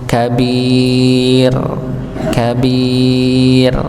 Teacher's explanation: Kabir ya dibaca tipis dan sama dipanjangkan dengan durasi yang sama · kata al-kabir ra-nya dibaca tipis. Ya, dibaca tipis.